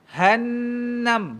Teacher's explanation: Nun syaddah fathah ada dengung dua harakat